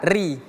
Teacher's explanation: Kalau dia kasrah i, barulah dia seperti biasa ri.